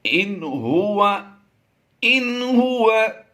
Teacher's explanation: آگے پڑھتے ہیں، ان ہوا، ان ہوا، یہاں پر نون ساکن کے بعد حروف حلقی میں سے ہا آ گیا تو ہم یہاں پر اظہار کرتے ہوئے بغیر غنہ کے پڑھیں گے